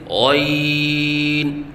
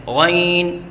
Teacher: غین ادنی حلق سے ادا ہوتا ہے، یعنی حلق کے اس حصے سے ادا ہوتا ہے جو منہ کے قریب ہے